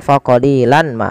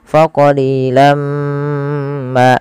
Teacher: langsung masukkan ke mim karena ia bacaan idgham bighunah. Kemudian setelah kita masukkan tanwinnya ke mim ditahan faqolilam ma.